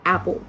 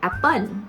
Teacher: If that syllable is stressed, we mean that that syllable we pronounce it with louder and higher pitch, like the example that I gave to you guys, like the word apple. We pronounce the syllable app, the first one, with the louder and higher pitch than the second syllable. So we are going to pronounce it like with apple, not apple, right?